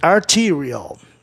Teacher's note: antes da consoante tem que soar I, como em mídia